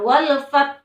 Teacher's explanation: Ha-nya harus tetap dibaca tapi sedikit saja karena diwakafkan ya. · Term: wakaf isyarah